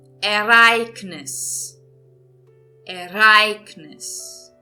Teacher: eu estou entonando aqui agora nessa palavra a segunda sílaba, não a última.